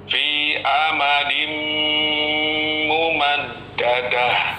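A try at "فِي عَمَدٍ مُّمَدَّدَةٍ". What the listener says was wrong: Fi'a. Ainnya jelaskan.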